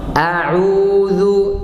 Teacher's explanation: Hamzah keluar dari tenggorokan bawah. Dari tenggorokan bagian bawah ya. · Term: huruf hamzah